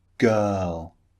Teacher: in some cases in British English, the R is not pronounced. These two vowel sounds replace the R sound in many many words.